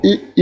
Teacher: इ ई का जो उच्चारण स्थान है वह तालव्य है